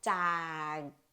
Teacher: Squeeze it. Do not release the ending sound. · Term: K ending sound